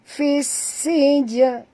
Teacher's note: Fis alif lam syamsiah, masukkan bunyi fa baris bawah terus ke dalam sin tanpa membunyikan alif lam. Ini dinamakan idgham syamsiah, ya.